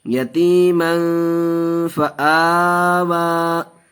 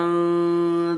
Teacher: کھڑا زبر الف مدہ کے قائم مقام ہوتا ہے, اس لیے اس کو بھی ایک الف کے برابر کھینچیں گے, اس لیے ہم نے دونوں کو کھینچا.